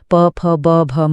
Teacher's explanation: इन इनको बोलने के लिए दोनों होठों का मिलना जरूरी है। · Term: ओष्ठय वर्ण